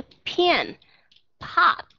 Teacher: aspirated P là khi mà đọc âm p đứng đầu một chữ p po các bạn sẽ thấy chúng ta có sự thổi hơi ra